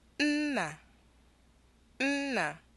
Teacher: a high tone and a low tone